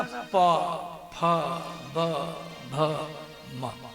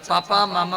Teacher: पापा और मामा बोलने में दांत का आवश्यक नहीं है, केवल दोनों होठ हो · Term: प वर्ग